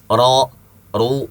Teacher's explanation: Misalnya huruf ro yang tebal ya, ro tebal dia berbaris fathah atau dhammah, ro, ru. Ah, itu pangkal lidahnya naik. Bukan ujungnya.